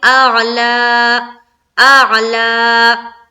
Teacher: اس زبر کو کھڑا زبر کے برابر کھینچ کر وقف کرنا ہے